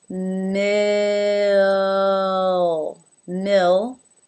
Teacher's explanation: kind of slide through an uh sound before we finish it off with the el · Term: dark L